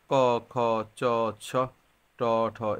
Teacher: যেসব ধ্বনি উচ্চারণের সময় স্বরতন্ত্র একটু কম কাঁপে সেটা হচ্ছে অঘোষ ধ্বনি